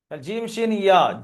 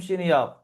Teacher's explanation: জিভের মধ্যখান উপরে তালুতে লেগে উচ্চারণ হয়